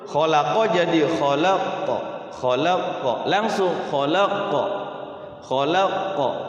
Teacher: huruf qafnya itu kalau yang tidak bertasydid dia langsung mantul. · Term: qalqalah